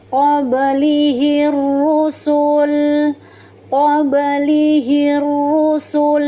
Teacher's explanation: Jadi ketika bunda-bunda menemukan tanda wakaf tersebut, maka bacaannya harus berhenti, namanya tanda wakaf aula. Jadi lam sukunnya disukunkan atau dimatikan, kemudian sempurnakan sifat tawassutnya ya, alirkan sedikit suaranya.